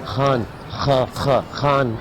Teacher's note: All these sounds are made from the back of the throat